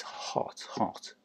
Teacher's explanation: Kind of slack o sound, but not very open. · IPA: ɒ